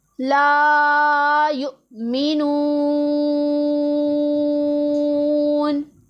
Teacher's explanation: واو مدہ بھی ہو رہا ہے، اس لیے اسے ہم نے لمبا کر کے پڑھنا ہے